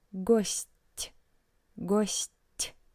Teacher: in the word гость, which means guest, you can hear that t sounds soft